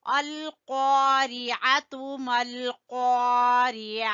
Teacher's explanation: عین کو گلے کے درمیان سے